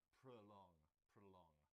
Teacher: It's got 2 syllables. The stress is on the second, and so the O in the first part sounds like prolong, prolong.